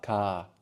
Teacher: ka has a long vowel. It's imitating the AR.